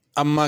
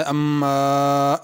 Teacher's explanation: اما کے میم پہ غنہ کرنا ہے اور الف کے اوپر مد ہے، اما اس کو کھینچنا ہے۔